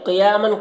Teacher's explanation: قاف کو پر پڑھیں گے